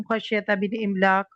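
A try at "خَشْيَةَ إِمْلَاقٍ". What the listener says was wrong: من نہیں ہے، خشیت املاق.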